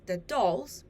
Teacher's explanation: In a noun phrase, the dolls, the word dolls is stressed. The word the is unstressed.